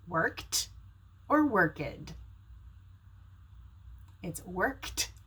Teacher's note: It's worked because it ends in a K, which is voiceless, so pronounce the ed as a T.